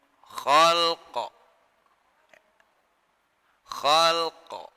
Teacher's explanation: Jadi lamnya mati, qafnya qalqalah